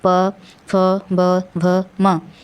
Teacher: फिर नेक्स्ट है प फ ब भ म। इसको बोलते समय वायु का प्रेशर कहाँ पड़ रहा है, होंठ पे, ओठ पे पड़ रहा है। तो ये आपका हो गया ओष्ठ व्यंजन।